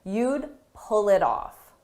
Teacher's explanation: It's difficult to hear that D because it's very soft